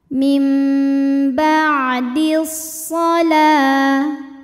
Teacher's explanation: Sebab alif lam menghadapi huruf syamsiyah yaitu huruf shad. Maka cara baca alif lamnya adalah tidak dibaca atau disebut dengan idgham syamsi, dimasukkan ke shad.